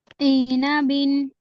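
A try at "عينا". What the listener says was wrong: ई नहीं, आइना बिन, लंबा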